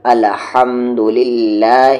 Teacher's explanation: تو ہا کا مخرج ہے مڈل تھروٹ۔ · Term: مڈل تھروٹ والے ہا